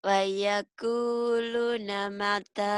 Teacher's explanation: Lu-nya kan panjang. Ku panjang, lu-nya panjang, tanya panjang. Jadi 3 yang panjang.